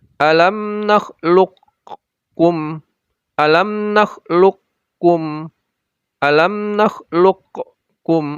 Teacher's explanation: Seakan-akan ada dua kaf di situ. Tidak ada qafnya sama sekali.